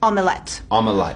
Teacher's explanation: the girl pronounces the schwa sound with an E sound.